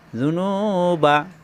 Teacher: জু কোন টান নাই নু এক আলিফ টান